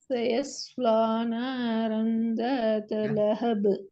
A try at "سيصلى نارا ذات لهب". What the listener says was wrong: நாக்கு அசையுது. த த நாக்கு தூக்கி தான் உச்சரிக்கிறீங்க. நாக்கு அசைஞ்சு தான் உச்சரிக்கப்படுது. உச்சரிக்க இப்ப தனியா சொல்ல போக்குள்ள கூட சரி, பிரச்சனையே இல்லை. ஆனா மொத்தமா ஓதுற நேரத்துல ப்ராப்ளம் வருது.